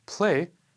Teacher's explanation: when a sonorant consonant like 'l' appears after an aspirated stop in English, it can optionally be devoiced.